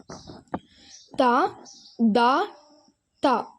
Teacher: நாவின் நுனிப்பகுதி சட்டி பற்களின் வேரில் படும் பொழுது வெளியாகின்றன. சட்டி பற்கள் அப்படின்னா நம்ம முன்னுள்ள பற்கள் 6 பற்களையுமே சட்டி பற்கள் அப்படின்னு சொல்லுவாங்க.